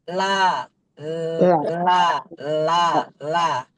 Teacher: terhalang dengan ujung lidah yang menyentuh langit-langit makanya dia menyimpang suaranya itu akan secara otomatis akan ada di kiri dan kanan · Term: inhiraf